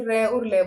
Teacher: दंत मूल से र और ल बोले जाएंगे